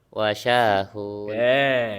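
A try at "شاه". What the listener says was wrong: Pun pendek atuh. Nama selain Arab. Nah, baik nama orang maupun nama tempat tidak boleh bertanwin.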